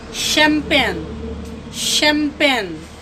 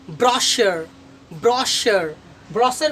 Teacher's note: अब जो शब्द इटली से आया है या यूनान से आया है तो उसमें CH का उच्चारण श, तालव्य श होता है।